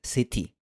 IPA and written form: sɪti (city)